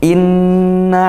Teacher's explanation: ghunah kita dengungkan ya E karena Nun bertasydid